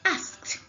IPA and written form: ӕskt (asked)